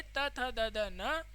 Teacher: जो त वर्ग है इसका जो उच्चारण स्थान है वह क्या कहलाएगा दंता कहलाएगा